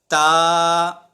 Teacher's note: تا زبان کی نوک اور سامنے والے دانتوں کے اوپر جڑ کے ساتھ جب زبان کی نوک کو لگائیں گے تو اس سے تا ادا ہو جائے گا